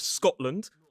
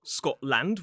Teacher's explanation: we often pronounce it lᵊnd. So we reduce the vowel